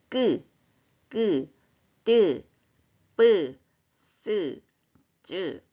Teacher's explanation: 자, 끄, 뜨, 뿌, 스, 쯔 같은 경우는 성대는 훨씬 긴장되지만 그렇다고 숨은 거칠진 않지만 소리는 더 단단해졌어요. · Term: 된 소리